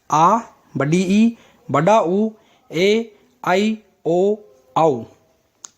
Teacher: दीर्घ स्वर ये स्वर जो दूसरों से मिलकर के बनते हैं, यानी कि दो स्वर आपस में मिल जाते हैं और उनके उच्चारण में जब दुगुना समय लगता है, उनको दीर्घ स्वर कहते हैं।